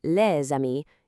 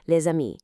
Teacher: instead of hearing two distinct words, les amis, you hear one smooth sound, les amis. It literally bridges the gap between words and creates that signature French flow.